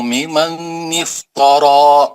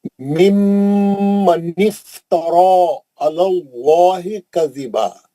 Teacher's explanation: एक मीम पे गुन्ना करिए